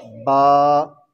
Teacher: बा कहाँ से अदा होता है? दोनों होंठों के अंदर वाले हिस्से को मिलाने से